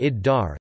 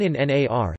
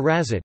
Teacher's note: The Maltese article assimilates to a following coronal consonant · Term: sun consonants